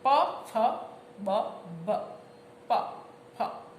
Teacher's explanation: અને ઓષ્ઠ્ય વ્યંજન પ ફ બ ભ, પ ફ, બે હોઠ અડે એટલે ઓષ્ઠ્ય વ્યંજન